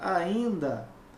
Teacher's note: É como se eu tivesse o I, né, com o til, nasalizado